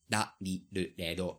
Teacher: they don't have either an L or an R, but it's combined into a da, di, do, de, do sort of sound, which is sort of like an Italian or a Spanish flapped R